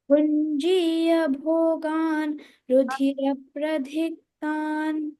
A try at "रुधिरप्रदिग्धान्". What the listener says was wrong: Pradigdhan, di alpa prana. Bhunjiya. Pradigdhan. Bhunjiya bhogan ruधिरप्रदिग्धान्. Bhunjino. Bhunji. Jha is mahaprana. Jha is alpa prana. Bhunjiya. Bha mahaprana. Bhunjiya. So rudhirap, one dvitva sound. There is a pressure. Rudhirapradigdhan.